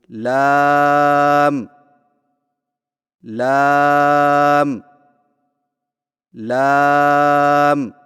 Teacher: जुबान के बारीक किनारे को ऊपर वाले दांतों के मसूड़ों से लगाकर बारीक आवाज में पढ़े · لام کی ادائیگی میں زبان کے باریک کنارے کو اوپر والے دانتوں کے مسوڑوں سے لگا کر باریک آواز میں پڑھیں